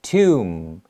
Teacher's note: we end it with an m sound so your lips have to touch together